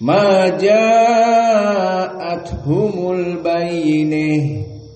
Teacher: mad wajib muttasil bagi qiraah al-Kisai tawassut arba, not isba, not like Warsh and Hamzah. So just 4.